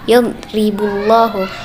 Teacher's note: huruf ra dibaca tarkik atau tipis, sebab berharakat kasrah